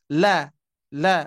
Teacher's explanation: haknya huruf lam itu dibaca tipis